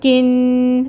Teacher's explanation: تو کاف کو نون کے ساتھ ملائیں، کن، اور نون پہ آپ کو پتہ ہے جب غنہ ہوتا ہے، جب مشدد ہو تو غنہ ہوتا ہے، تو کن 2 کاؤنٹس کے لیے آواز جو غننے کی ہے اس کو ہم کریں گے